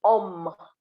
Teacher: you cannot say hum the h is silent